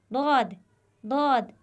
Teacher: दद हरफे दद यह हर्फ हाफिज कहलाता है इसका मखर है हर्फ ए दाद की दुरुस्त अदायगी के लिए जबान के बाएं या दोनों किनारे को ऊपर की दाड़ो के मसूड़ों के साथ हल्का सा मिलाए